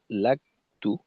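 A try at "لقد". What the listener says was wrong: হ্যাঁ এখানে এইটার ক্ষেত্রে কাফে বাতাস ছিল না।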